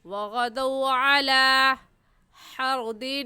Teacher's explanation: کیونکہ واو ساکن سے پہلے زبر آ گیا ہے، اس وجہ سے اس کو واو لین کہیں گے، اور واو لین کو بغیر کھینچے اور بغیر جھٹکا دیے ہوئے نرمی سے ادا کرتے ہیں۔ تو ایسے پڑھیں گے وغدوا علی حرد، یہاں تنوین پر غنہ اس وجہ سے کریں کیونکہ تنوین کے بعد حروف ہلکی جو کہ 6 ہیں، حمزہ، ہا، عین، ہا، غین، خا میں سے کوئی لفظ نہیں آیا۔